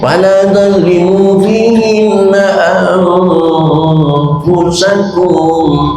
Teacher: Nun mati ketemu fa, itu M, otomatis M. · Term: ikhfa